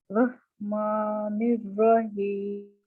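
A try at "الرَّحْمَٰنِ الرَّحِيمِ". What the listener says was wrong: अच्छा माँ नहीं होगा. माँ मुंह जरा खुला होना चाहिए. माँ. जैसे कहा था ना, खुशी से माँ को देख के कितनी खुशी होती है.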